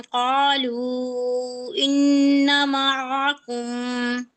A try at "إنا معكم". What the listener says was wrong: إنا معكم। अलिफ मद्दा ड्रॉप नहीं करना।